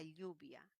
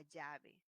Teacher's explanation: Esta secuencia de consonantes se convierte en una L. La L, como definición, es un fonema lateral palatal.